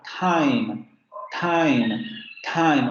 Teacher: Otra de las características que habría que recordar es que en el caso del inglés, este fonema, el inicio de palabra o inicio de sílaba, recuerden, se aspiraba. Entonces, en esta lengua, en el inglés se decía time, time, time, obviamente exagerando la aspiración, ¿no?